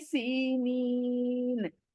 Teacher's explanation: नी को खींचा क्यों जेर के बाद या मद्दा